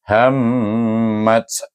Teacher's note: bila kita baca hammat, dia itu dengan wajibul gunan, dengung 2 harakat